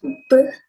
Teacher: a bilabial stop consonant and voiced sound